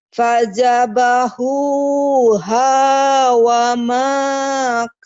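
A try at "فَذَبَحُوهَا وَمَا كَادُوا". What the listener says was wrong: kadu. Itu dal. Kadu ya. Fadzabahuha wa makadu.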